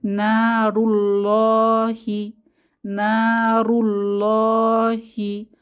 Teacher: লামটিকে ল অধ্বনিতে মোটা করে উঁচু আওয়াজে পড়তে হবে। যেভাবে আমরা ইংলিশে ল বলি এভাবেই ল আল্লাহ অধ্বনিতে বলতে হবে।